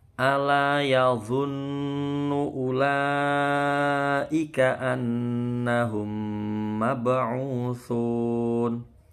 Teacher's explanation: Yadhunnu, ya, nunnya ini tasydid, gunnah musyaddadah, dengung.